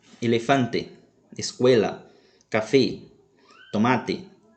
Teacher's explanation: observe que o som da letra e sempre será fechado